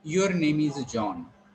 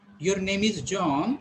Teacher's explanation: if it is with falling tone, it is statement